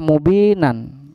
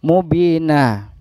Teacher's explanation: Mad aiwad ini ciri khasnya ini terletak di dalam kalimat, di belakangnya adalah kalimat dengan bertanda atau berharokat tanwan. Tetapi kita bacanya diwakafkan atau berhenti, sehingga yang terucap adalah kalimat dengan berharokat fathah. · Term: mad iwad